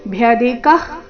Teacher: ಭ್ಯಧಿಕಃ ಇಲ್ಲಿ ಭ್ಯ ಧಿ ಮಹಾಪ್ರಾಣ ರಸ್ವ, ನಂತರ ಅಲ್ಪ ಪ್ರಾಣ ಕ ಇದೆ. ಭ್ಯಧಿಕಃ ವಿಸರ್ಗ ಅರ್ಧ ಖ ರೀತಿ.